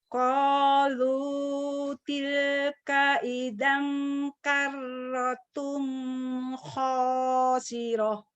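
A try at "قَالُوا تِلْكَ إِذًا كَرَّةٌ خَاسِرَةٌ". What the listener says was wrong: Bagus, tinggal melatih.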